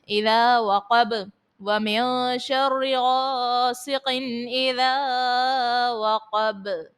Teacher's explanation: غاسقن اذا وقب، الف سے پہلے زبر ہے، الف مدہ، اور با کو آپ ساکن کرنے کی صورت میں خوب ظاہر کرو گے کیونکہ با حرف قلقلہ کا ہے۔